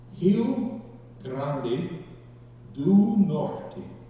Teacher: Notice that Rio is an aspirated H, Grande is trilled, and Norte is also an aspirated H sound.